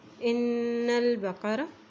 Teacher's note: नून के बाद शद आ जाती है तो उसको हम उस पर हम गुन्ना करते हैं और नून की ज़बर को हम लाम के साथ मिला रहे हैं क्योंकि लाम के ऊपर जज़म है, जज़म है।